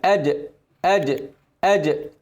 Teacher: الجيم من نص اللسان، لما نيجي نعمل قلقلة الجيم بتكون مكانها كده، بتعمل اهتزاز، بتسيب المكان.